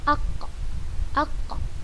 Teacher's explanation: Intinya, pangkal lidah kita itu sudah pasti paling belakang. Nah, pangkal lidah kita menempel pada langit-langit bagian atasnya. Ko, kita tambahkan hamzah di sebelum huruf qaf dan kita sukunkan huruf qafnya.